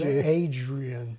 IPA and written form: Adʒrian (Adrian)